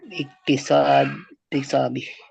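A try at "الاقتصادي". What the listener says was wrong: Dal pakai dal.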